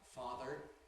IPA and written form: ˈfɑːðr̩ (father)